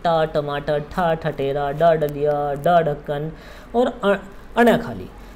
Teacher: जो टा वर्ग है ये मूर्धा से बोला जाता है।